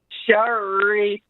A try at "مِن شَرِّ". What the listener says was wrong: شر, because Ra has a kasra, is not as full mouth.